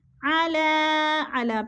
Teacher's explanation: علی، علی پہ مد منفصل ہے، 4 الفی مد ہے، 4 الف کے برابر ہم نے اس کو کھینچ کر پڑھنا ہے